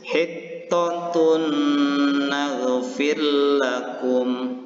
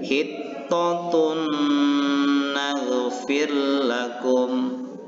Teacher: membaca huruf nun ini seolah-olah bertasydid dan disertai dengan dengung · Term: Idgham Bighunnah, idgham bi gunnah